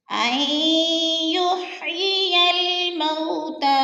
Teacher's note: اور تا کے اوپر کھڑی زبر ہے، کھڑی زبر کو ہم نے لمبا کر کے پڑھنا ہے، ایک الف 2 حرکات کے برابر. اور یا لکھنے میں آتی ہے، پڑھنے میں نہیں آتی.